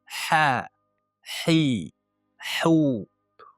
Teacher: Ikkinchi qilinadigan xatolardan bittasi arab tilidagi halqumning tubidan chiqadigan ha ni halqumning o'rtasidan chiqadigan ha harfiga o'xshatib qo'yishadi. Ya'ni u halqumning o'rtasidan tog'ay bir-biriga yaqinlashishi natijasida, tomoq devorlarga yaqinlashishi natijasida hosil bo'ladi. Bu harfni yaqinlashgan paytida u sirg'algan holatda hosil bo'ladi, ya'ni ha hi hu Buni eng ko'p e'tibor beradigan jihatimiz mana shu ha ga ham o'xshatib qo'ymasligimiz kerak.